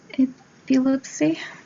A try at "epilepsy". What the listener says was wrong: You were almost perfect. Epilepsy is how we say it. Epilepsy. So the emphasis is on the first syllable. Epilepsy.